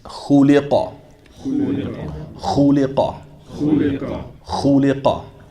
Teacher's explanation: And at the end of it, we have that qaf, which should be pronounced with what? A little pop, qalqala